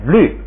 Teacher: ，噜加上沙， 沙要把调摁下来读4声，然后那个乌呢要变成吁